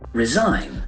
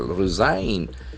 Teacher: the accent falls on second syllable